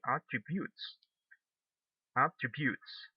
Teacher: the stress goes at the last syllable so that means this is or this work as a verb